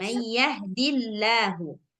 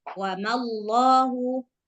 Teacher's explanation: Kalau sebelum lafzul jalalah ada huruf yang berbaris kasrah, maka Allahnya dibaca tipis seperti yang biasa.